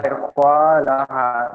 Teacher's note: আলিফের ডান দিকে জবর এসছে, আলিফ মাদ্দা হবে, তাই এখানে টান দিয়ে পড়তে হয়।